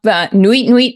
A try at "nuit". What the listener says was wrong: It's nuit. The T is silent.